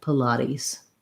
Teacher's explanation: Our first syllable is very short, light I sound, Pilates. And then we make that T into a flap, sounds a little bit more like a D. And then the final S says a Z sound, Pilates.